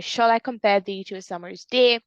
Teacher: The stressed syllables are shall, com, thee, some, and day. And it follows the rhythmic pattern of the dum, the dum, the dum, the dum, the dum.